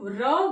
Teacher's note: क्योंकि जो प्राणवायु है, वह हमारी जो श्वास है वह जीभ के साथ में कुछ लुढ़कती सी प्रतीत होती है, इसीलिए इसको लुंठित प्रकंपित व्यंजन कहा जाता है।